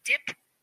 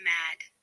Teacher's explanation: The d is a voiced stop consonant. The sound for d is d, as in the beginning of dip and the end of mad.